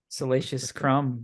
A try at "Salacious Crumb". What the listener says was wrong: Crumb, get it right, damn it. Salacious Crumb. You said Scrum.